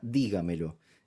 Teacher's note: la palabra dígamelo es una palabra que se acentúa en di que no es la última sílaba como en el caso de la aguda tampoco es la penúltima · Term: sílaba tónica, sobresdrújula